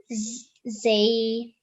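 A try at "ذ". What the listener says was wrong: The. Remember, no buzzing sound, no z sound.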